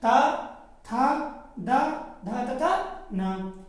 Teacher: ऐसे वर्ड या अक्षर जो हमारे दांत की सहायता से बोले जाएं